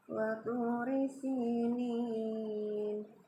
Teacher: huruf nun yang berharkat kasroh ini ya bertemu dengan huruf ya sukun, ini mad asli ya, panjang 2 ketukan. Cuma karena di akhir ayat ya, maka huruf nun yang di depannya itu berubah ya, apabila diwakafkan berubah menjadi sukun, maka disebut mad arid li sukun ya.